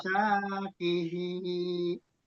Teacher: Yang nggak panjang cuma qaf-nya aja. Lain dari qaf panjang semua. Dua harokat semua diseragamkan.